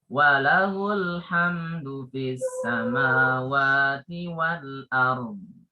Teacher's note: asalnya kan walahu panjang. Tapi karena setelahnya itu ada sukun ya, alif lam sukun, maka jadi pendek.